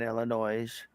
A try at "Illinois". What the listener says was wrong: Illinois. The S is silent. pronounced Illinois.